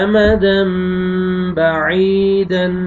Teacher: یا جزم سے پہلے زیر، عین کو آپ نے کھینچنا ہے